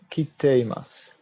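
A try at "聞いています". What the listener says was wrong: Not kite, but so the ku at the end of kiku becomes ite as well. So it's ki.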